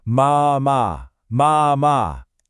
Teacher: That long stretched out ah sound is exactly what we're going for.